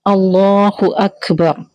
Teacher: اللہ کا نام یہاں ہم موٹا پڑھیں گے، ہیوی پڑھیں گے، منہ بھر کے. اکبر تو کاف میں ہمس ہوگا، یعنی کاف میں ہلکی سی کھا جیسی ساؤنڈ آتی ہے، ٹھیک ہے.